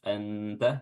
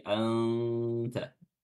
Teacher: nun sukun bertemu dengan ta hukumnya adalah ikhfa ya samar-samar nunnya dibaca samar-samar jangan dibaca jelas Anta tapi Anta ya menyamarkan dengan meletakkan makhraj huruf ta meletakkan